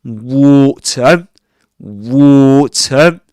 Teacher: not pronouncing the R sound as in American English